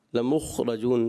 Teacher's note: खा की अदायगी और कलकला ना होने पाए, इस चीज़ का ख़ास ख्याल रखना है। बाज़ बच्चे खा पर भी कलकला कर देते हैं।